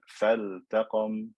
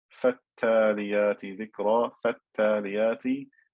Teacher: that is lam shamsiyya, so it gets merged into the ta. But this lam here in the word faltaqam is part of the verb, so I have to pronounce this lam clearly.